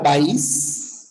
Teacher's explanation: la fuerza de voz está en la i pero no hay problema porque son dos sílabas no tendrías que analizar pa y otra sílaba is no O